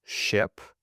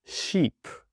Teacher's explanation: for the short sound, my mouth is almost closed. And for the long sound, I'm stretching my mouth as much as possible. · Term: short i